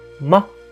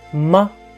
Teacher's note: So without tone, it is a very soft neutral tone, ma. Very soft, ma.